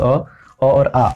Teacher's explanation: ये जितने भी अ और आ, अ के अंतर्गत जितने भी प्रकार के अ होते हैं, हम जानेंगे कि 18 तरह का अ होता है, तो सभी प्रकार का अ जो है वह कंठ स्थान से ही बोला जाता है। इसका उच्चारण स्थान है कंठ।